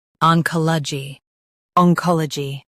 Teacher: ong kohl uh jee oncology ong kohl uh jee oncology Stress kuh and keep jee light.